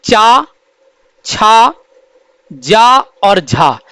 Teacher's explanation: चा वर्ग के व्यंजन चा, छा, जा और झा, ये चारों व्यंजन स्पर्श संघर्षी व्यंजन कहे जाते हैं।